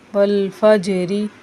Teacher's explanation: زیر کی حالت میں را باریک پڑھی جاتی ہے